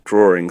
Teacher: So this intrusive R, you can find it in Brooklyn speech.